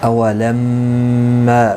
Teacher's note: میم مشدد پر غنہ ہوگا اور یہاں پر مد منفصل ہے. · چھوٹی مد لگتی ہے جسے 3 الف کی مقدار کے برابر کھینچ کر پڑھا جاتا ہے